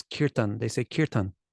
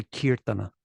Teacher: make things easier in some ways and they are sloppier so one of The Telltale symbols for prakrit or sloppy speak speech is to neglect the last vowel on a word